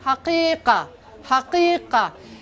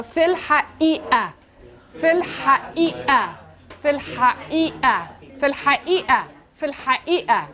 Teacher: The قاف in فصحى becomes the glottal stop in مصري.